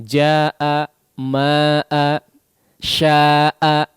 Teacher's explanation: kadar mad aslinya ya yang tadinya 2 harakat menjadi bertambah, ya, menjadi bertambah sampai 4 ataupun 5 ataupun lebih daripada 2 harakat, ya. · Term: mad wajib muttasil